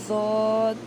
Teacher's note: زبان کی کروٹ جب اوپر کی داڑھوں سے لگے، بائیں طرف سے آسان اور دائیں طرف سے مشکل، اور دونوں طرف سے ایک دم نکلنا بہت مشکل ہے. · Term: حافیہ